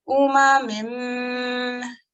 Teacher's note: Remember to give it 2 seconds in order for the nasalization to be correct. · the sound is going into my nose